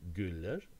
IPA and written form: gyller (güller)